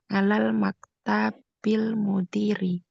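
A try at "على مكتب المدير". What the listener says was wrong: Maktabnya nggak ada alif lamnya, jadi ala maktabil mudiri ya.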